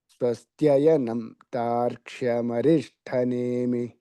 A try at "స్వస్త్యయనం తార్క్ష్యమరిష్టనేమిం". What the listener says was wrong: అమరిష్టనేమిం. మరిష్ట ఒత్తు లేదండి, గుర్తుపెట్టుకోండి అది. స్వస్త్యయనంతాక్షమరిష్టనేమిం. చెయ్యనంతాక్షమరిష్టనేమిం మహద్భూతం వాయసం దేవతానాం.